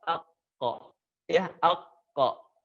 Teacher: Terangkat bagian pangkal lisannya bukan ke atas ak, tapi agak ke dalam. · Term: sifat isti'la